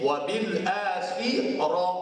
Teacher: Di sini wabil akhirah, ra dibaca dengan tebal. Disebut dalam istilah tajwid dia panggil tafkhim, bukan tarqiq.